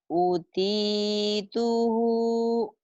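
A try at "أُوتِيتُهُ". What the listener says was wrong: U-nya panjang. T-nya panjang. Utituhu.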